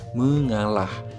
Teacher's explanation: Bertemu dengan menasal maka berubah menjadi mengalah. Huruf K pada kata dasar kalah berubah menjadi bunyi nasal.